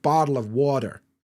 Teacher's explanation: Americans have got something called a T flap, which is where the T sounds like a D, and you get a bottle of water.